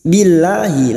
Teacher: lam jalala yang sebelumnya kasr kita baca tarik tipis